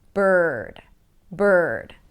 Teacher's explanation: And by the way, for the R, and yes, it's one of the challenges and it's listed in the workbook. Um, for the R, you pull the tongue in.